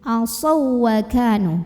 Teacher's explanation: Jadi huruf pertama harus sukun ya. Maka dibacanya lebur ya ke huruf kedua. Jadi langsung aja fokus ke waw yang tasydid. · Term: idgham mutamatsilain